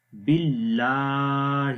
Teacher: لام کو لمبا کریں گے، اس کے اوپر کھڑی زبر ہے، کھڑی زبر کو بھی ایک الف کے برابر لمبا کرتے ہیں